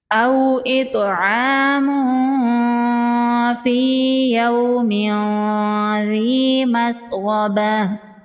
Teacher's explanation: او اطعام فی یوم ذی مسغبہ، واو لین ہے، اس کو نرمی سے پڑھیں گے۔ طا حروف قلقلہ میں سے ہے، طا ساکن پر قلقلہ ہوگا اور طا کو پر پڑھیں گے۔